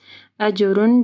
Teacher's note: اجر جیم کے اوپر قلقلہ ہوگا، اجر غیر نہیں پڑھنا، غیر ممنون۔